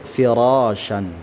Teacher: Ra yang berharakat fathah, ra-nya sendiri yang berharakat fathah maka dia juga ditebalkan ya.